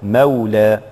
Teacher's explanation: إذا وقفنا نعتني بهذا الألف ونمد بمقدار الطبيعي، بل ونقرأ هذا الألف من كلمة مولى بالإمالة